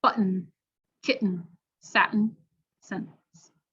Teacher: the glottal stop and that the air is redirected through the nose for the n sound